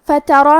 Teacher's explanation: کلمت فترا میں فا پہ تا پہ اور را پہ تینوں پہ زبر ہے، تو ہم یہ تینوں زبر کو برابر سے ادا کریں گے اور حرف الرا کو موٹی آواز میں پڑھیں گے